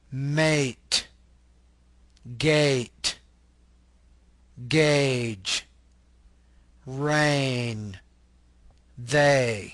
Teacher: this is a mid front unrounded tense vowel